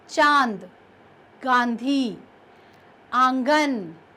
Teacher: अनुनासिक शब्द नाक और गले दोनों से इसका उच्चारण किया जाता है। आप अनुस्वार शब्द जब बोलेंगे तो आप देखेंगे कि वो शब्द का उच्चारण हमने सिर्फ नाक से किया, लेकिन यहाँ पर नाक और गले दोनों का प्रयोग किया जाता है।